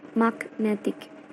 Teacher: Kemudian setelah mendapatkan imbuhan ik yang menjadi magnetic, phonetic transcription-nya dan stressnya berubah pada syllable yang berbeda, yaitu the stress moved from mag to net